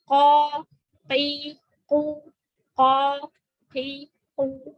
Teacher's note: Jadi pangkal lidahnya kita pepetin dengan langit-langit yang lunak. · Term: qaf